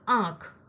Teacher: चंद्रबिंदु का जो उच्चारण है वह नाक और मुंह दोनों को मिलाकर किया जाता है · जैसे देखो शब्द आंख, आपका नाक और मुंह दोनों बोल रहे हैं, मतलब आंख के उच्चारण में आ बोलते वक्त मुंह और नाक दोनों का सहयोग हो रहा है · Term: अनुनासिक